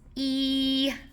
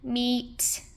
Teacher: So our high front vowel is E, like we hear in meat.